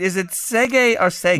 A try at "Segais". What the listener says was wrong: No, I think you're thinking French. Irish. Segish. Is the name of the, in mythology, the well from which the Boyne River was said to have emanated.